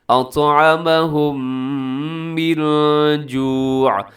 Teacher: میم ساکن کے بعد میم ادغام غنے کے ساتھ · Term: ادغام شفوی